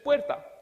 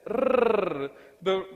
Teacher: However, when it comes to the r, that sound is not in our database. The rrr, the rolled r, does not exist in the English sound database.